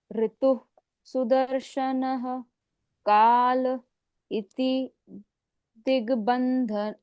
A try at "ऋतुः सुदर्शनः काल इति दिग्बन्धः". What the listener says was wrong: बंधनः कहाँ है? बंधः।